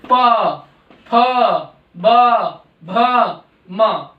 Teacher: फिर हमारा आता है प वर्ग जो कि ओष्ठ्य है। इसमें हमारे दोनों होठ आपस में मिलते हैं तो ये ध्वनि निकलती है।